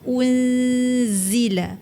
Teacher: Jadi sebab tu unzila dia jadi tebal. >> Jadi zai tak boleh tebal. Zai ni huruf nipis.